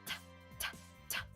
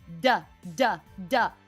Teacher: If you go, duh, duh, duh, same thing. Your tongue, your lips are doing the exact same thing. The only difference is your vocal folds are vibrating. That is the only difference between those two sounds. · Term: voiced